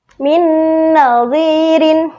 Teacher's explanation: harus dibaca idgham bi gunnah, yaitu dibaca dengung dan dimasukkan. Contohnya, min nadhirin, ada nun sukun bertemu nun.